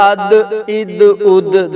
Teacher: پھر اسی طرح اد اد اد، دال پہ قلقلہ کریں گے، دال ساکنہ حروف قلقلہ میں سے ہے